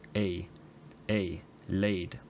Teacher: The only difference from mine is that it's kind of a broader diphthong. There's more difference between the tongue position of the start and the end. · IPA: [ɪj]